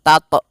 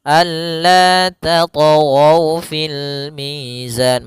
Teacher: Hati-hati membacanya, jangan sampai membaca dengan adanya hamzah, jangan tato, tapi dia alla tatghaw fil mizan, mengalir saja. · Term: qalqalah